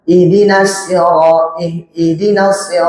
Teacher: Ada hembusan nafas ya. Ihdinasir jangan dibaca tanpa hembusan nafas.